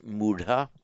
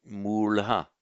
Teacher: Now you will very often see in Pali that where you get a d, and the same applies to the aspirate dha, where you get a d or a dha intervocalically, that is between two vowels, it very often flips in Pali into a subdotted L. That's the retroflex L.